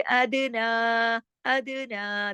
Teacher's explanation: अदना दाल पे कलकला क्योंकि दाल जज्म के साथ है, दाल कुतुबिन जद्दिन का हर्फ है।